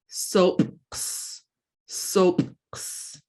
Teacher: glottalized P, it's going to be kind of like a popping sound.